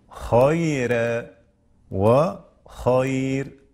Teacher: فالراء ترقق وقفا ووصلا إذا كانت مسبوقة بياء ساكنة. والملاحظ هنا السكون، الياء هنا سكون الحي، سكون الحي. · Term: ترقيق الراء